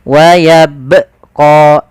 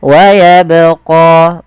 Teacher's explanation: dengan warna biru ini menandakan dia bacaan qqalah yang di mana huruf ba Ini harus kita pantulkan kesahan yang terjadi yang pertama tidak memantulkan huruf ba dalam membaca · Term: dipantulkan